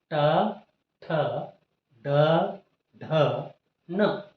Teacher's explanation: ಮತ್ತು ಮೇಲ್ ಮೇಲ್ದವಡೆಯ ಒಳಭಾಗದಲ್ಲಿ ಈ ಸ್ಥಾನ ಬರುತ್ತೆ ಇಲ್ಲಿ ನಾಲಿಗೆಯು ಮಡಚುವುದರ ಮೂಲಕ ನಾಲಿಗೆಯನ್ನು ಮಡಚಿ ಇಲ್ಲಿ ಟಚ್ ಮಾಡುವುದರ ಮೂಲಕ ಅಂದ್ರೆ ಮೂರ್ಧ ಜಾಗದಲ್ಲಿ ಟಚ್ ಮಾಡುವುದರ ಮೂಲಕ ಟ ವರ್ಗದ ಐದು ಅಕ್ಷರಗಳು ಉತ್ಪತ್ತಿಯಾಗುತ್ತವೆ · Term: ಮೂರ್ಧನ್ಯ ಅಕ್ಷರಗಳು